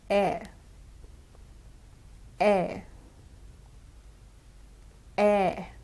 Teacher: Now the air sound is a diphthong consisting of two vowels, the e and the schwa sound at the end.